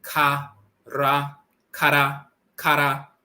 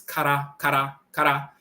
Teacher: the tongue tapping the roof of the mouth once